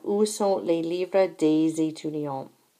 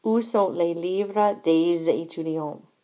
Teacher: anytime in French we have words that end in an S like day does here, okay, we're going to hear those S's as a Z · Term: liaison